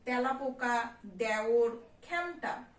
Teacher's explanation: খাঁটি বাংলা শব্দের ক্ষেত্রে এ ধ্বনি বিবৃত উচ্চারণ হয়, যেমন তেলাপোকা, দেওর, খেমটা।